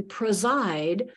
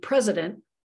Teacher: in preside that first e is a little bit murky but in president it's stressed and so we can say oh there's a short e there